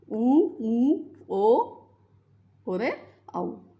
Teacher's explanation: जिन स्वरों के उच्चारण में जिह्वा का पश्च भाग सक्रिय रहता है, उन्हें पश्च स्वर कहते हैं। · पश्च स्वर जिनके उच्चारण में जीभ का पीछे का भाग सक्रिय रहे